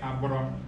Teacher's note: your tongue touches up to the top of your mouth very quickly